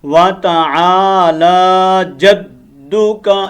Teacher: عین کو لمبا کرنا ہے ہم نے، الف مد ہے یہاں پر